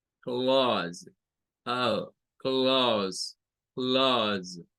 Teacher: Es un sonido en el inglés que se parece a la A del español, pero no es tan abierta y tiende a parecerse a una A con una O.